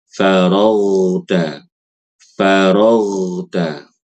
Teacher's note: ketika membaca huruf ghain yang sukun itu tidak boleh qalqalah karena dia bukan sifat dia tidak punya sifat qalqalah.